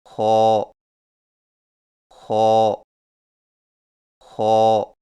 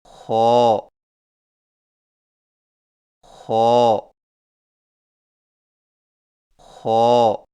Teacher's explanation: خو کی ادائیگی میں زبان کی جڑ کو تالو کی طرف بلند کرتے ہوئے موٹی آواز میں پڑھیں